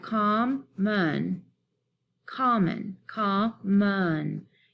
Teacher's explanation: You hear the last syllable here has the unstressed schwa sound